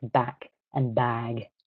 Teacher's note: the length before voiced and unvoiced consonants